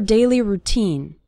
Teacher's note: The syllable teen is stressed in the word routine.